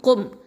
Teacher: இந்த காஃப் அப்படிங்கிறது நமக்கு தெரியும், இது அகசல் லிசான் எழுத்து, கீழ் நாவு எழுத்து. அடுத்தது மீமில் சுக்கூன் இருக்குது, இது ஷஃபத்தான் உதர் எழுத்து.